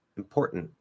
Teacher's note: You could say the first T and stop the second T.